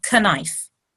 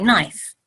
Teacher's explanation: we don't pronounce the k we don't say k knife we say knife the K is silent